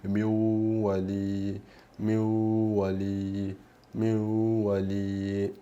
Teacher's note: Invece qua facciamo sentire la runna, miwali, miwali, miwali. Saltiamo il nun, non facciamo sentire il nun in maniera chiara, non sa in maniera chiara, ma lo fondiamo con la runna e l'ua per prendere subito con la wa.